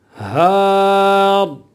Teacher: وقف کی صورت میں را موٹی پڑھی جائے گی، پر پڑھی جائے گی، منہ بھر کے پڑھی جائے گی